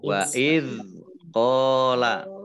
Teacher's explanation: zal itu bukan qalqalah, jadi jangan dimantulkan